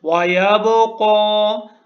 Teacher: Next آیا، وَيَبْقَى، با کے اوپر قلقلہ ہے، تھوڑا سا ہلا کے پڑھنا ہے با کو، اور قاف کے اوپر سٹینڈنگ فتحہ ہے، کھڑی زبر ہے، اس کے اوپر کھڑی زبر ہے، تھوڑا سا کھینچنا ہے قاف کو۔ یا سائلنٹ ہے، یا کو نہیں پڑھنا۔